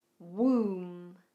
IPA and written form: wuːm (Womb)